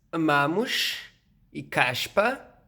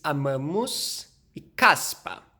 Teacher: Depois, nós temos o antigo fonema S, que nos dialetos daqui de Portugal e em alguns do Brasil, como o dialeto carioca, o dialeto do Rio de Janeiro, esse som em posições finais de sílaba virou sh, enquanto em dialetos como o meu próprio, continuou s. Portanto, aqui em Portugal se diz amamos e caspa, e no meu dialeto se diz amamos e caspa, portanto mais conservativo.